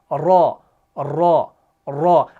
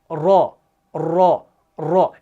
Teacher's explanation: Repetition से मुराद यानी जो हम बार बार कर रहे हैं, बार बार कर रहे हैं, यानी जुबान जो है ना वो एक जगह रुक नहीं रही, बल्कि जुबान को हरकत हो रही है, जुबान बार बार ऊपर लग रही है। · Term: सिफत तिकरार